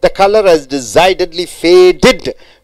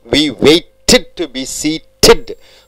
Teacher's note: So all the verbs ending with the T and D, when it is added with the ED, it must be pronounced as ID.